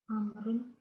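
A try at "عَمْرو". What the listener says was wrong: Bukan, kalau mau disukunkan terakhirnya. Bukan Amru, tapi Amr. Kalau mau disukunkan terakhirnya. Tapi kalau lengkap Umaru dan Amru. tidak mamnu' minas sarf. Dia bisa tanwin, bisa kasrah, amrin bisa.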